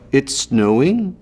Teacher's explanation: Canadians have this rise at the end, so every statement sounds like a question. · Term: Canadian rise